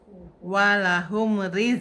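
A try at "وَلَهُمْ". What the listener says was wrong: Nah, itu meme-nya belum selesai tuh. Walahum Pokoknya selesain dulu ini tempelnya baru lepas. jangan jangan jangan dihentak juga, ditahan juga.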